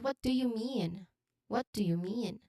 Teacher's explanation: the emphasis on mean in the pronunciation it signals a genuine need for explanation